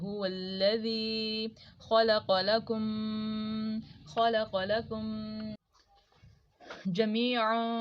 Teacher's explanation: ثم استوى پہ ہمارا غنہ ہو رہا ہے، میم شاد آ رہی ہے